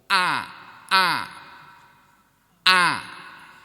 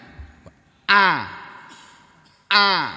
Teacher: Nah, huruf alif itu cara mengucapkan biar betul karena makhraj atau tempat keluarnya huruf alif itu terletak pada tenggorokan yang jauh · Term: huruf hamzah